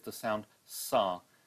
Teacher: the noisy part of the s, the fricative, followed by the voiced vowel sound